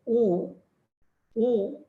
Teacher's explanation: So for example, when we say oo, long oo that we were talking about, oo, that's our lips get rounded, but that's a back vowel. It comes from the whatever you can locate as back part of the please keep it there, right, back part of the tongue.